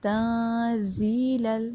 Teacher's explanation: ہم نے یہاں پہ آواز چھپانی ہے، ہائڈ کرنی ہے نون کی آواز کو